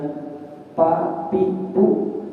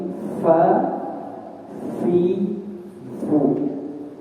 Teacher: huruf fa, yaitu bibir bawah bagian dalam bertemu dengan ujung gigi seri atas.